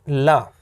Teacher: ला क्या है, पार्श्विक व्यंजन है